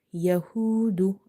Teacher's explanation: I have stretched wow because this is from the madda letters. Madda letters are the letters which we read by stretching, same like vertical harkat.